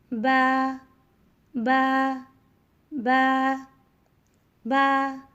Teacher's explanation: با کو 2 حرکات لمبا کرتے ہیں۔